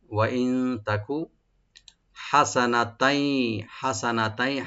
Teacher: আর তার উপরে যে দুই জবর আছে তানবিন, এখানে ইয়ার সাথে মিলে এদগাম করে গুন্না সহকারে পড়া হবে।